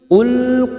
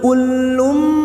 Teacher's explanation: Qul, hati-hati ya, ini perbedaan huruf qaf dan huruf kaf. Huruf qaf isti'la, huruf tebal, dan huruf kaf ini tipis. Jangan samakan ya, ini tebal, ini tipis.